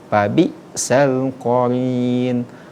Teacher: maka sifat dari huruf hamzah ini ketika dia sukun yaitu syiddah, terhenti. Babi sel, tidak boleh babi, tidak boleh, karena sifatnya itu sendiri syiddah, terhenti.